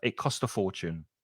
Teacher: it joins on that T consonant sound and the vowel sound. They link together.